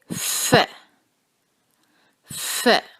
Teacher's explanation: ہم فا کو ادا کرتے وقت ساتھ سانس کی آواز جو ہے اس کو شامل کرتے ہیں، جیسے ف ف. اور اس کو ادا کرنے کے لیے آپ تصویر میں دیکھ سکتے ہیں کہ آپ نے زبان کو کہاں رکھنا ہے اور آپ نے اپنے اوپر کے سامنے کے دانتوں کو نیچے والے ہونٹ پر لگانا ہے.